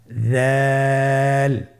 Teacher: উচ্চারণ করার সময় অবশ্যই 3 আলিফ টেনে পড়তে হবে। দালের মাখরাজ হলো জিহ্বার আগা সামনের উপরের 2 দাঁতের আগার সঙ্গে লাগিয়ে উচ্চারিত হয়